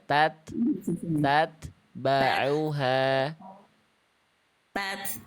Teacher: ta tidak punya sifat qalqalah. tidak punya sifat memantul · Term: ta sukunnya